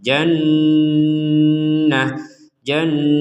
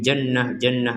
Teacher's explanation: ada Nun bertasdid kita tekan dan disertai dengungan janah janah jadi Nun bertasdid ini kita dengungkan dengung itu artinya ada di rongga hidung kita itu dengungan